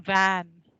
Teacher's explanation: The labiodental fricative V, as in van.